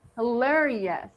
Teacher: in the last syllable, we do have the schwa sound